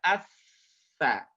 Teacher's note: Huruf sa juga sama. Caranya, selain mendesis, dia keluar dengan cara menyentuhkan ujung lisan dengan dinding dua gigi seri bagian atas. Ya, jadi sentuhkan ujung lisannya dengan dinding dua gigi seri bagian atas, kemudian didesiskan asa.